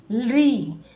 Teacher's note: दंता। यानी कि जब हम इसका उच्चारण करते हैं तो हमारी जिह्वा क्या करती है? दंत को स्पर्श करती है।